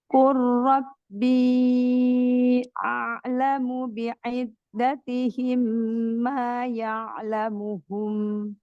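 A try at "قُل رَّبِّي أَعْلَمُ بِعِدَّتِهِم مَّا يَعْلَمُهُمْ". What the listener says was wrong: Masalahnya waktu ditambahin syiddah, ditambahin tawasuknya, huruf ainnya, hamzahnya jadi ain, nggak boleh. A-nya tetap A ya. A'lamu, nggak boleh jadi A, nggak boleh. Rabbi a'lamu, a'lamu, hamzah dulu.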